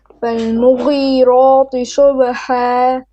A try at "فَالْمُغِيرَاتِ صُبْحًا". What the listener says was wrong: Sad more heavy. Sub. Okay, you're saying muri ra tui to no. Muri ra ti fat. Flat. Okay, listen, you're making your ta heavy. You're saying muri ra ra tu. Fal muri ra ti flat. Muri ra ti.